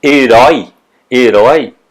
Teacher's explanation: a última sílaba é herói, que é a sílaba mais forte